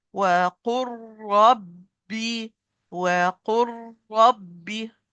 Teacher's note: Lam is totally disappear, totally merged.